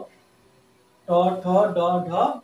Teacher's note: তারপর ট বর্গ, ট, ঠ, ড, ঢ, মূর্ধন্য। এগুলি দেখবে উচ্চারণ করার সময় আমাদের জিভটা উল্টে গিয়ে মূর্ধা স্পর্শ করে, অর্থাৎ একদম আমাদের মাঝ তালুতে স্পর্শ করে জিভ। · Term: মূর্ধন্য ধ্বনি